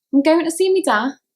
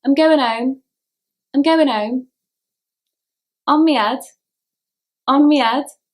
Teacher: T and D drop from the end and the H is dropped from the beginning.